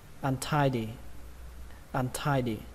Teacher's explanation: Từ đầu tiên, trọng âm của nó rơi vào âm thứ hai, âm thai, thai. Âm này thì các bạn phát âm gần giống như từ thai ở trong tiếng Việt vậy đó.